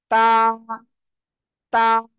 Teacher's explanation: হবে কোথায় গোড়ায় লাগাতে হবে এরপরে উচ্চারণ করতে হবে তা কোথায় জিহ্বার আগা দুই দাঁতের গোড়ায় লাগিয়ে